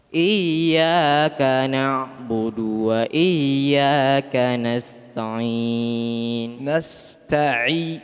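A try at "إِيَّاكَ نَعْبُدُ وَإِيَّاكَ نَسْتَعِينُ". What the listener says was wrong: Huruf ain. Huruf ain tadi kita sudah jelaskan huruf ain makhraj nia dari tenggorokan tengah. Tidak boleh lewat hidung.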